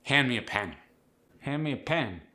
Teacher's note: The short E becomes a short I.